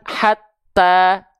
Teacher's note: bukan mengalir nafas ya untuk huruf ta